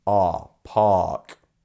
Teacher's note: we don't pronounce the AR as an R. We just lengthen that A sound